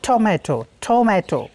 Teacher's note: जैसे टोमेटो है टी O M A टी O, तो उसमें वो पहला वाला जो ट है वो ट नहीं रह जाता, वो एस्पिरेट होकर के ठ हो जाता है